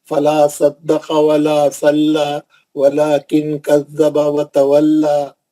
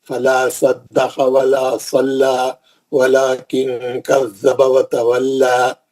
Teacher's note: اس میں جتنے بھی لام ہیں، یہاں پہ اللہ کا نام ہے ہی نہیں، ہے نا. تو یہ پورے لام پتلے پڑیں گے. لو وفل لو بول کے موٹا نہیں کریں گے، نارمل.